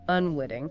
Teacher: That first I is short, unstressed